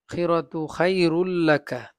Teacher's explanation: তানবিনের পরে লাম আসছে ইদগামে, বেলা গুন্না, গুন্না ছাড়া পড়তে হবে